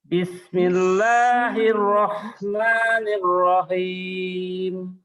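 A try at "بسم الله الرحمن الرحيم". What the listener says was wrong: mulutnya jangan monyong. Nah, bismillah, jangan monyong mulutnya sangat roh.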